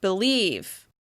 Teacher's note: Some people, including me, even reduce this first vowel sound, and it sounds like believe.